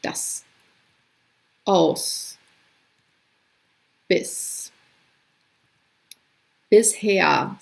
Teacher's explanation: An unvoiced S sound occurs at the end of a syllable